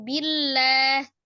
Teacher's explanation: sebelumnya ada harakat kasrah maka dibaca tipis